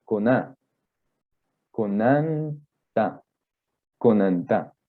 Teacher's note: El acento no iría en cona, no se diría así, sino coná, conanta.